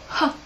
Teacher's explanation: letter H the letter H is a stop sound but then if you listen to it carefully the sound it seems like there's a schwa at the end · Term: tricky sounds